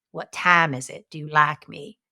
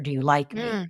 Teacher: the quintessential pronunciation feature of Southern American English which is this a for I